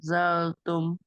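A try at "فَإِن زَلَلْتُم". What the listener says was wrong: zalal. Lamnya ada dua. Ingat dengungnya ya. 2 sampai 3 rakaat panjangnya.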